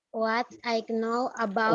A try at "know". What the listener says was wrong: bukan keno. Kok keno toh? What I know. Ini dibaca no. Jadi K-nya nggak dibaca, nggak keno gitu, tapi no.